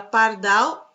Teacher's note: E na palavra pardal, a última sílaba é a sílaba tônica. E a par é sílaba átona. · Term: oxítona